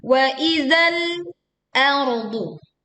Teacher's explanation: tekan lam sukun dengan menahan sebagian suara di ujung lidah